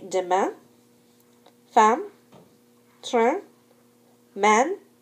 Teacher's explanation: When the letters A-I-N, A-I-M, I-N, I-M are at the end of a word or are followed by a consonant, they represent a nasal vowel. Remember, do not pronounce an N after the nasal vowel.